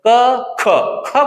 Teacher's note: क ख बोलेंगे तो हवा तेजी से आएगा ज्यादा बाहर निकलेगा लेकिन क में नहीं निकलेगा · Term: महाप्राण